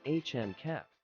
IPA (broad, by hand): ˈhændɪˌkæp